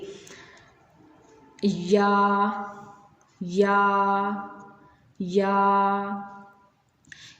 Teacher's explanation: ये दोनों या जो हैं ये मुंह के खाली हिस्से से अदा होंगे।